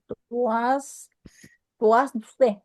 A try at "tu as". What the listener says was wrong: Cuidado que la S no se pronuncia, ¿eh?